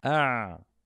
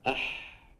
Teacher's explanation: الحاء رخوة مع انه من نفس المخرج